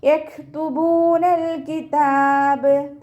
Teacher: കാഫ് സുക്കൂനാവുമ്പോൾ കുറച്ച് എയർ പുറത്തോട്ട് പോണ സൗണ്ട് കൊടുത്തിട്ട് വേണം ഉച്ചരിക്കാൻ